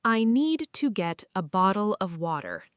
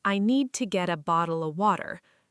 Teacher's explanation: Notice get a becomes getta, bottle of becomes bottle a.